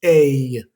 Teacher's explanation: La EIL también va a pasar algo parecido, va a sonar ey, ey. Date cuenta de ese pequeño sonido como de resorte al final, ey. Como que quieres decir una E, pero no la terminas, ey.